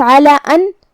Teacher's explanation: یہاں مد جائز منفصل ہے، لہذا ہم اپنی آواز 2 سے 4 مد کے برابر لمبی کریں گے